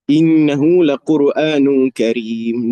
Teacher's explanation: Nun ada gunnah wajibul gunnah 2 harakat.